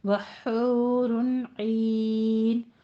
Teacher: حور میں حا وسط حلق سے دونوں ہونٹوں کو گول کر کے ادا کیجیے وہ مدہ، اور رن عین میں اظہار حلقی کرنا ہے کیونکہ آگے حروف حلقی میں سے آ رہا ہے.